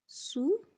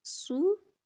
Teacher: سین اور صاد میں فرق، سین باریک ہے، صاد پر ہے